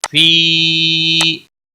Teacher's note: मदे मुनफसिल है, तीन अलिफ के बराबर खींच कर पढ़ेंगे